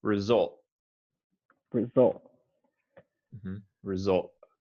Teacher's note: i wouldn't say the t i would say result result result